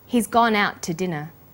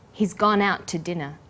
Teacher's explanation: we link out which is stressed and to which is unstressed the final T sound in out is held slightly longer